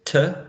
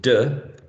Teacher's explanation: the ending is a voiceless tur as in finished if it's voiced duh as in cleaned